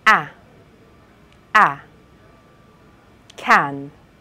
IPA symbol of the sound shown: æ